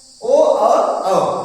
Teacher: क्योंकि हम ओ अगर कहेंगे अथवा औ कहेंगे तो दोनों ओष्ठ हमारे सिकुड़ते हैं, और ध्वनि जो है अंदर गले से निकल रही है, कंठ से निकल रही है, इसलिए इसका उच्चारण स्थान क्या होगा, ओष्ठ होगा। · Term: कंठ ओष्ठ